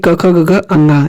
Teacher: ये आपके क से क वर्ग और क से कंठ, ये सभी कंठ से बोले जाते हैं